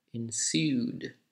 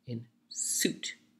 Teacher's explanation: there's a long vowel ooh because there's a soft d ensued and on the other side in suit there's hard T sound and thus the vowel a little shorter